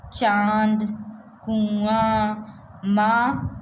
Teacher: इसका उच्चारण करते समय ध्वनि मुख के साथ साथ नाक से भी बाहर निकलती है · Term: अनुनासिक